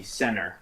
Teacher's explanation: So there we don't even say the T.